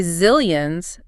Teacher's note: The Z sound, it has a distinct buzz to it, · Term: voiced fricative